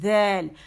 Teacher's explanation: تو ازا نہیں ہوگا یہ، کیوں کہ اس میں بزنگ ساؤنڈ نہیں ہے، اس میں ٹپ آف دا ٹنگ جا کے سامنے کے جو 2 دانت ہیں وہاں پر سامنے کے یعنی ٹپ ٹو ٹپ جا کے لگے گی زبان